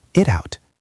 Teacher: we connect the T in it to the O and out. It out. So the whole phrase sounds like one single word. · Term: linking